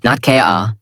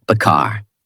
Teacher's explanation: In American accent, you clearly hear the R. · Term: American R sound